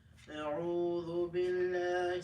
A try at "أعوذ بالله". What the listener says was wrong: Stop reading through your nose. Very bad habit.